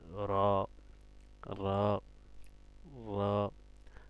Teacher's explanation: আপনার জিহ্বার আগাটা দাঁতের গোড়ার সামনের মাড়ির দাঁতের উপরে লাগবে